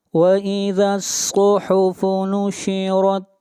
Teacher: صاد کو موٹا پڑھیں گے، صاد حروف مستعلیہ میں سے ہے